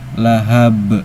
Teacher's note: Ada qalqalah kubro, sebabnya ada huruf qalqalah yang sukunnya karena berhenti, bukan sukun asli, yaitu di huruf ba yang awalnya kasroh tanwin, karena wakof atau berhenti jadi sukun. Cara bacanya pantulannya besar karena qalqalah kubro.